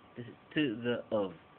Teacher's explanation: las palabras pequeñitas como t y of, que son preposiciones, tienen la schwa. So, no diríamos to, but t.